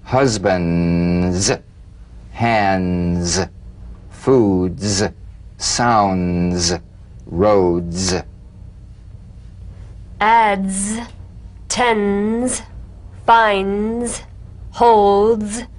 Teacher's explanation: and peel the tip down a bit as the Z vibrates just before the tongue springs away use a light staccato treatment without sustaining the Z so feel